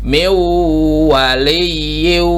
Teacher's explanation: Ya, ini nun sukun ya, kemudian ada wawu di depannya. Maka yang dibaca wawunya, si nunnya seolah-olah tidak ada.